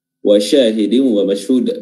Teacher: Huruf shin di sini makhrajnya adalah pertengahan lidah, wasatul lisan, bertemu dengan langit-langit bagian atas yang sejajar dengannya. Namun pertemuannya itu tidak melengket, hanya terangkat sedikit dan hampir melengket, dan disitulah kita menyebarkan udara ke seluruh permukaan rongga mulut.